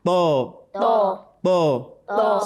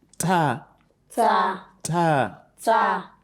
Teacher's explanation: Tho is a heavy letter. The back of the tongue rises up when you pronounce tho, whereas that of ta, it doesn't do so. The tip of your tongue touches the root of your upper teeth.